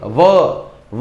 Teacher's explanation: वो दांत जो है ऊपर का हमारा नीचे के ओठ को टच कर रहा है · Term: दंतोष्ठ